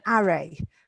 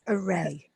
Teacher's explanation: you missed the pronunciation a little because you put the stress on the first syllable. So you said array, but it's array.